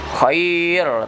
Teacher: Ya ini di ujung ya, ro-nya menjadi tafkhim, khair tebal.